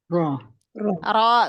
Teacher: bergetarnya ujung lidah dengan getaran yang ringan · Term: takrir